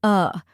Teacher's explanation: which sounds like Dill as in dill pickles next is uh a short and relaxed sound like the a in sofa